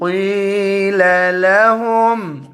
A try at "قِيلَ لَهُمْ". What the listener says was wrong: قي मोटा पढ़ो قاف